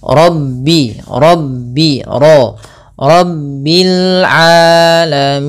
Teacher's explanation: Pada lafal ra ini juga tebal, yaitu ra tafkhim. Kita baca dengan bacaan tafkhim.